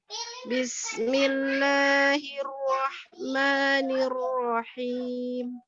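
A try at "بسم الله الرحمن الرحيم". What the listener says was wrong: Roknya sekali 2 kali aja pengurangan getarannya. Bismillahirrahmanirrahim. Iya, nanti latihan huruf roknya ya, sekali atau 2 kali pengulangan getarannya. Tapi yang lain insya Allah sudah bagus.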